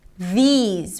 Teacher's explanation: We begin with a voice th, but here we have a high e sound. These, ending with a z sound.